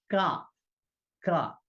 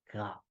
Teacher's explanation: Your tongue, middle part of your tongue is touching the upper portion of the mouth.